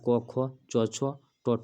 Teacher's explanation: पहला दूसरा बोलने के बाद स्वर तंत्री जो है झंकृत नहीं होता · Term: अघोष